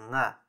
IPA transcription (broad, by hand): ŋ